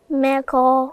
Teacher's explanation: الميم رقيقة، القاف فخمة لأنها من حروف التفخيم، تمام، وهي مفتوحة وراها كمان حرف المد الألف، هتبقى مقا.